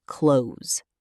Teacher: The S sound at the end of close should be a Z, a voiced sound, not an unvoiced S. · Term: voiced ending